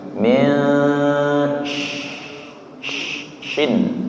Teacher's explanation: Ikhfa niku samar ujung lidahnya tidak nyentuh nggih. Min suaranya samar min syin.